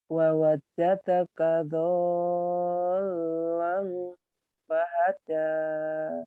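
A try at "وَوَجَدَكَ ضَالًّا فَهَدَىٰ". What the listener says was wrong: Jangan ada tasid. Fahada. Fahada. Jangan fahada. Jangan ada tasidnya ya.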